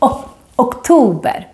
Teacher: the first o in the word October is short because we have two consonants coming after it can you hear it oh October but the second o on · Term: short version